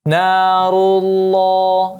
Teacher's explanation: lafzul jalalah Allahnya di sini juga ditebalkan. Narullah, ya ditebalkan langsung.